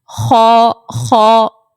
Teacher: پیچھے سے آواز آپ کی بھاری ہو رہی ہوگی، آواز اٹھتی ہوئی محسوس ہوگی